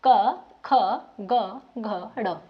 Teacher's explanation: जिन वर्णों का उच्चारण करते समय हमारी जो जीभ का पिछला हिस्सा हमारे कंठ को छूता है वह हमारे कंठ व्यंजन कहलाते हैं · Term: कंठीय व्यंजन